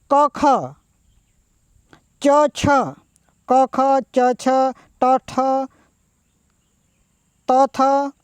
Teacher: જે વર્ણોના ઉચ્ચારણ વખતે સ્વર તંત્રીઓમાં કંપન કે નાદ ઉત્પન્ન થતો નથી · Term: અઘોષ